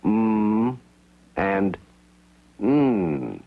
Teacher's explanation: the speaker can also lower his soft palate to connect the nasal passages to the throat and the resonances of the nasal cavities will contribute to the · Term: nasal sounds